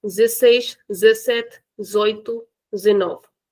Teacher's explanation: it's very very common for the Portuguese people, for the people of Europe, Portugal to skip the beginning also of these words